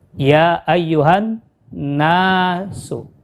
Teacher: Nun kita baca panjang 2 harokat karena ada huruf alif, huruf mad tabi'i.